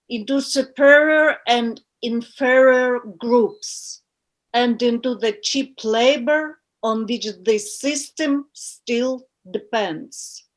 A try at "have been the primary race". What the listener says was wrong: you're having trouble with the stress where to put the stress stress and like rhythm